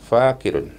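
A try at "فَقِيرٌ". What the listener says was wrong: Iya, yang panjang itu dikinya, Fakirun, ya.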